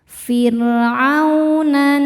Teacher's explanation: Ala fir'aunan, nun tasydidnya dihukumi gunnah musyaddadah karena nun bertasydid. Cara bacanya berdengung, ditahan dengungannya kurang lebih 2 harokat.